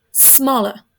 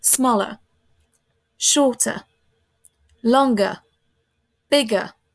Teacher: Vous voyez, je prononce presque pas le ER et je ne prononce pas du tout le R. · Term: schwa